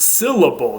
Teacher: the N assimilated to the following L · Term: assimilation